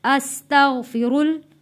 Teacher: را موٹا پڑھے جانے والا لفظ اور آگے اللہ کا لام ہے، اس کو بھی ہم نے موٹا پڑھنا ہے